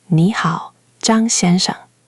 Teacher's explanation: That's retroflex, Zhang with the curl.